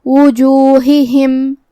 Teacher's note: ہا کی ادائیگی حلق کے نیچے والے حصے سے ہے. ہم یہ دونوں ہا کو ظاہر کریں گے اور اسے زیر سے ادا کریں گے.